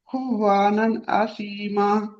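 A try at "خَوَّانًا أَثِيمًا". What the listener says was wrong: नन नहीं होगा, नन। नन अपने नून के मखरज में रहे, जुबान को उधर ही लगाए रखे, नन। नन।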